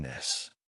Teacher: vibrate your vocal cords for the voice sound, like in this